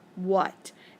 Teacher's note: he sure isn't making the a or the a sound he's actually making the uh sound